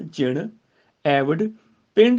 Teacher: ਜਿਹੜਾ ਪੱਪਾ ਨਾਸਕੀ ਉਚਾਰਨ ਨਾਲ ਆਏਗਾ